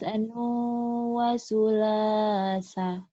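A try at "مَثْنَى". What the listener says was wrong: masnu. Kenapa masnu ya? patah berdiri. Kalau itu patah berdiri, bukan masnu, bunyinya a. Masna. Kalau doma terbalik baru mas doma ya. Ini kan patah terdiri. Masna.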